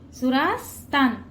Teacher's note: ता वर जो अनुस्वार आहे त्याचा उच्चार न करायचा आहे